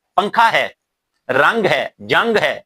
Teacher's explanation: یہ الفاظ ہیں، اس میں نون ظاہر نہیں کیا جاتا